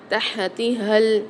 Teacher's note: جو موٹے پیٹ والی ہا ہے اس میں سیٹی کی آواز نکلے گی، حلق کے درمیانی حصے سے ادا ہوگا۔ جو دو چشمی والی ہا گول ہا ہے اس کو ہم بھاری آواز کے ساتھ پڑھیں گے، ہلکی سینے میں وائبریشن ہوگی، ہم اس کی ادائیگی کرتے ہیں اور یہ منہ کے خالی حصے سے ادا ہوتی ہے۔